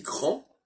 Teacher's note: quand je dis grand, l'absence du D marque le masculin